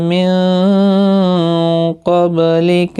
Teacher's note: قاف مستعلیہ ہے، پر پڑا جائے گا، با ساکن پر قلقلہ ہوگا